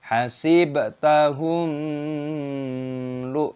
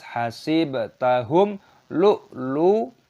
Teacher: Mim sukun bertemu dengan lam, dibaca sebagai izhar syafawi. Kita membacanya dengan jelas, jangan menasalkannya. Hasibtahum lu, itu tidak diperbolehkan.